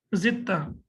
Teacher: In Quran, you might see here that there is a tashdid on ta. That means that dal is not being pronounced. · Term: idgham